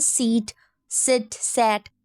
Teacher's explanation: lips क्या हो रहे हैं स्प्रेड हो रहे हैं